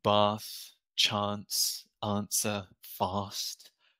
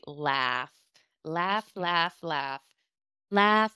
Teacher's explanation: you'll also hear my British pronunciation of laugh it's that long a